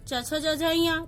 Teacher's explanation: च वर्ग च छ ज झ ञ तालु से